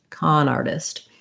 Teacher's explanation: This T in artist is a flap T. It sounds like a light D. And we just have, the AR does say R, so just like the word R.